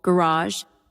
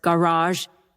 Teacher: Americans often stress the second syllable garage. Brits the first